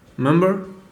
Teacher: Do you remember the first day of school? Here the first syllable has dropped almost any trace of the consonant quality of the R sound